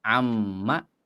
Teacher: Ma hadza cuma ditambahkan an sebelumnya. An kalau ditambah ma dilebur jadi pendek amma.